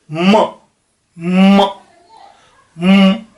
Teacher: जो म बोला जाएगा वो होठ दोनों बंद होंगे और नाक से साउंड आएगी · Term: नेजल